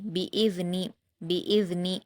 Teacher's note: با پر حرکت جلد پڑھیں گے، حمزہ پر بھی حرکت ہے اس کو بھی جلد پڑھیں گے. ذال پر جزم ہے، حمزہ کو ذال سے ملائیں گے اور نرمی سے ادا کریں گے. نون پر بھی حرکت ہے اس کو بھی جلد پڑھیں گے.